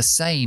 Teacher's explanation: la M es bilabial significa que los dos labios se tienen que juntar es nasal sonido Sale por la nariz m igual que en